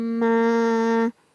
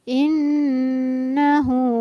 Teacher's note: Jadi cara membacanya adalah dengan mendengung dan ditahan selama 2 harokat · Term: gunnah